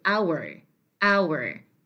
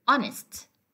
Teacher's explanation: the H at the beginning of these words are not pronounced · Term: silent